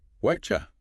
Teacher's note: That sound comes from the T and what hitting the Y sound in you. They just kind of collide. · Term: spoken contraction